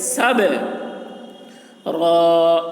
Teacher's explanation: با کی آواز ڈبل نکلے گی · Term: قلقلہ